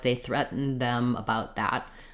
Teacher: Sometimes we will drop that d, moving from our N to our TH, and let the context tell the listener that we are using the full past tense of threatened.